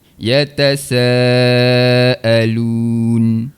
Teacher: huruf nun di bahagian hujung lidah. Angkat sentuh pada langit.